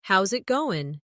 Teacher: Instead, "How is it going?" becomes "How's it going?" The is disappears, and the final g in going often softens. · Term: connected speech